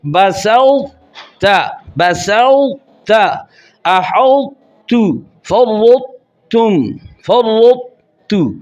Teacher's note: ان تمام میں طوا پر رکنا ہے تو آواز کو موٹا بنانا ہے ، یعنی زبان کا درمیان اوپر کے تالو کو لپیٹ لے، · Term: ادغام ناقص